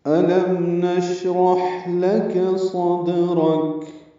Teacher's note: شین اور حا، دونوں میں ہمس ہوتا ہے، یہ محموسہ ہیں